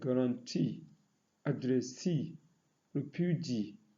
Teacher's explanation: Those that are stressed on the third syllables are words like guarantee, addressee, refugee.